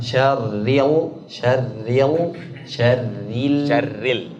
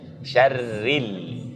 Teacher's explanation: Lamnya jangan tebal. Tipis aja.